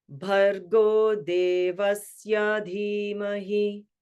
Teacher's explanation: Bhargo, middle, high. Devasya, low, middle, high.